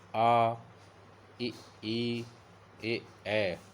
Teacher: जिन स्वरों के उच्चारण में ओठ वृत्ताकार नहीं होते, फैले रहते हैं, उन्हें अवृत्ताकार स्वर कहते हैं